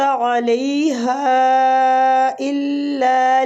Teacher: ہا پہ جو مد ہو رہی ہے یہ مد جائز منفصل ہو رہی ہے، اس کو کھینچنے کی مقدار بھی تقریباً 3 سے 4 حرکات ہے